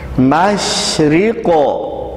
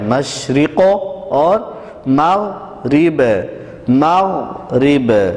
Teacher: یہ موٹا قاف ہے تو اس میں قلقلہ آ گیا